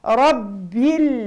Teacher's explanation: الراء هنا مفتوحة إذن مفخمة